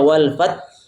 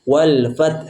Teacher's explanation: dibaca tetap jangan menghilangkan Ha jangan kita baca walfat sehingga hannya huruf hilang ini biasa sering